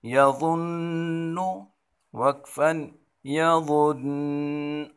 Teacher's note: نون مشدد ہے یہاں ہم غنہ کریں گے